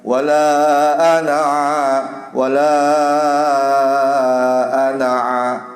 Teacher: Lafaz ana dalam Al-Qur'an itu hendaknya nggak boleh dipanjangkan